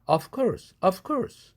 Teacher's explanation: v가 course 할 때 크 사운드 무성음의 영향을 받아서 v가 아퍼지 컨소넌트인 무성음 f로 바뀐다. 그래서 of course가 of course 이렇게 발음한다.